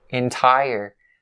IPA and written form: ɪn-ˈtaɪ-ər (entire)